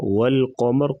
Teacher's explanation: قاف کو پر پڑھیں گے، قمر وقفاً را کو پر پڑھا جائے گا، را ساکن ہو جائے گی تو را ساکن ما قبل زبر تو را کو پر پڑھا جائے گا۔